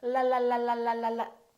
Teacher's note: it's going up and down right behind your upper teeth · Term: American L sound